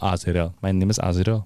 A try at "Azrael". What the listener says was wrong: Azrael. Azrael. You got to roll the R in the back.